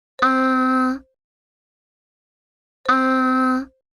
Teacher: That is the sound for the first tone. It is a high flat sound.